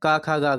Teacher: कंठ में का खा गा घा आती हैं